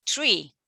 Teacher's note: Maybe you are not putting your tongue out, you are not pushing out air, so you are not producing 3, but you are producing tree.